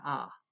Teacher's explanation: you have an open ah, maybe tongue a little forward, that space in the throat, in the mouth, means that there's no resistance to air pressure